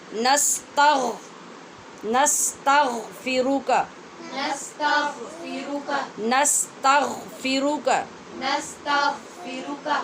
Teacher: غین پڑھتے ہوئے ایک تو آواز پر کریں، دوسرے حلق میں رگڑ کی آواز پیدا ہونی چاہیے